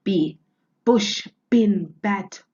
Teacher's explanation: an abrupt sound made by closing the mouth then releasing a burst of breath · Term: plosive sounds